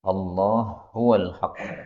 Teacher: ha ketemu ha ini boleh idgham